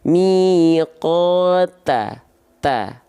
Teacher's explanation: Nah, kalau teman-teman lafalkan huruf ta seperti ini, ta, ujung lidahnya nampak keluar, ujung lidahnya keluar, nongol, menjulur. Ta, maka itu adalah huruf ta yang kurang sempurna.